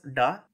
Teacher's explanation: retroflex /ɖ/, which appears geminated in between vowels